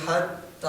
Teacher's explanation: پہلی ہا انتہائی حلق سے آئے گی سینے کی، اور دوسری وسط حلق سے آئے گی